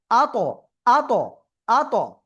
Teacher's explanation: ত অক্ষরটা জিহ্বার আগা সামনে দুই দাঁতের গোড়ায় লাগিয়ে। তো এটা যদি আমরা একসাথে উচ্চারণ করতে যাই তাহলে কি হবে, জিহ্বার আগা ওই উপরে দুই দাঁতের গোড়ায় যে এরকম লেগে আবার চলে আসবে। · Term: কলকলা